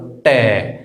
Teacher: हमारी जीभ जो है ऊपर घूम के उल्टी लग रही है तो हमारे वो हो जाता है मूर्धन्य।